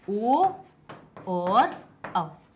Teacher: वो कंठ से भी निकली और साथ साथ में होंठों से भी टकराई, उनने भी प्रक्रिया की अपनी, इसीलिए इनको क्या कहा गया कि ये जो ओ, औ हैं वो हमारे कहां से निकले हैं, कंठ और ओष्ठ से।